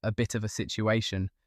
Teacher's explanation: that falling tone on situation, where the voice goes down on the word that should make you panic